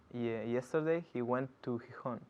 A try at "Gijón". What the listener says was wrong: Qué bien pronuncias Gijón.